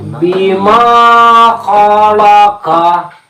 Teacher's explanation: Bi pendek, ma panjang.